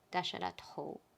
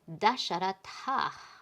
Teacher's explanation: So it's rule 335, and it's when visarga comes up against a voiced initial. So it could have also been a vowel, but in this case it's a voiced consonant, and so it becomes O, dasharato, when it was originally dasharatah.